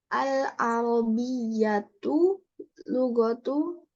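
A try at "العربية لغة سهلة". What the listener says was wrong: Tanwin. Maksudnya yang lugatunnya ditanwin.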